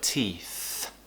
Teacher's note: my tongue is going between my teeth